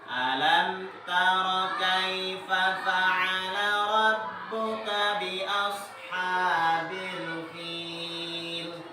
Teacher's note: mim sukun bertemu dengan ta, bacaannya harus jelas mimnya. Jangan ditahan, jangan alam taro, salah.